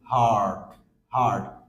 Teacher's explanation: আগে এবং পরে ভাওয়েল নাই, সেই ক্ষেত্রে আমরা আর এর উচ্চারণ করছি না। যেরকম বলছি হার্ড হার্ড, not হার্ড, হার্ড হার্ড না, হার্ড।